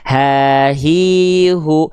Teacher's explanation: Hak besar dilafalkan bukan dari dada. Ingat, hak besar cukup dilafalkan dari pangkal tenggorokan kita